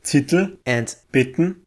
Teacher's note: English and German both allow the velar nasal ng at the ends of syllables only, and have syllabic l and n after consonants at the ends of words.